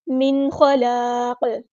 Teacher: نون ساکن کی آواز کو ہم یہاں ظاہر کریں گے، یہاں پہ اظہار ہو رہا ہے